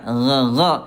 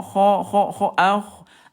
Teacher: huruf gin dia jahr tidak ada udara